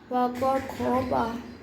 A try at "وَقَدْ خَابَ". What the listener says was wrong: وقد خواب الف مدہ کی مقدار پوری کرنی ہے. وقد خواب